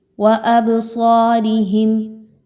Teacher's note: با پر جزم کا نشان، با پر قلقلہ کرتے ہوئے پڑھیں گے. صاد اگین موٹا حرف ہے، اس کو پر پڑھیں گے.